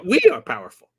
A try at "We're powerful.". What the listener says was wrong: No, it's we're. We're powerful. Not we are. We're powerful.